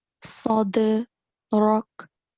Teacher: on dal, don't forget, you have to perform the rule of qalqala. So you have to make jerking sound.